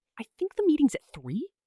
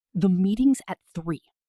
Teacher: Flat level tone at the end. Notice how much more certain you sound.